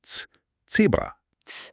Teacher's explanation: Auch das ist eine Kombination. Es klingt wie ein T und ein S.